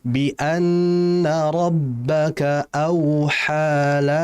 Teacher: Ha dan ha di situ dua-duanya berharokat dua saja. Yaitu mad asli atau mad tabi'i.